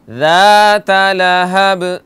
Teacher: ذا نہیں کہنا, یہ ذال ہے سافٹ